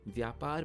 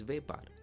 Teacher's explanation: The Sanskrit sound vya also becomes ve in Gujarati, so vyapar becomes vepar.